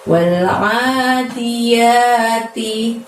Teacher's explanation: walnya pendek ya teman-teman, tapi a-nya dibaca panjang 2. Ingat, a-nya itu dari tenggorokan kalian, keluarin suaranya wal-a, seperti itu.